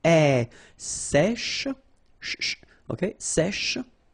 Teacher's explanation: So remember, we've got this E accent grave here. So it's really open.